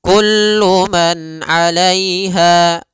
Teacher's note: k alaiha pada lafal Kullu di sini ada izhar halqi yaitu suara nunnya dibaca dengan jelas ketika bertemu dengan huruf Ain maka kita namakan dengan bacaan izhar ya Har halqizhar artinya jelas